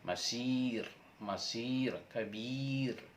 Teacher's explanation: Dan jika sebelum huruf ro berharokat kasroh atau bawah, misalnya masir, kabir, itu harus terdengar tipis.